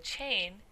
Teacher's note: a combination of two sounds, the t and the sh, to make ch, as in chain.